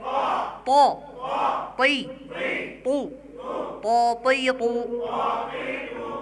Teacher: তয়ের উচ্চারণের সময় ঠোঁট গোল হবে না